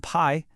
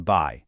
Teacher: A voiceless p in pie becomes a voiced b in buy.